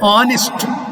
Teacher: We are not pronouncing this word ha, but a. Therefore, H is silent.